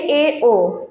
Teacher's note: এ ও এই দুটোকে আমরা বলব অর্ধ সংবৃত স্বরধ্বনি কেননা এটা দুই তৃতীয়াংশ খোলা অবস্থায় থাকে